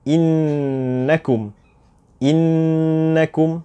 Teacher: Oleh itu kita namakan nun ini nun musyaddadah, di mana kita harus dengungkannya dengan kadar 2 harakat sahaja.